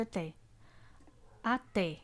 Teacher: o a ele é pronunciado com menor intensidade menos força o som é mais fraco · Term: átonas